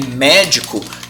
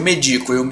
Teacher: Então você tem médico, que é uma proparoxítona, mas você também tem o verbo medico, eu medico, que é uma paroxítona, tá? Porque a sílaba tônica de médico é me e a sílaba tônica de medico, então você pensa eu medico, é o di, tá? Ela é uma paroxítona, né?